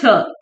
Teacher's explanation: छ तालव भी है महाप्राण भी है और अघोष भी है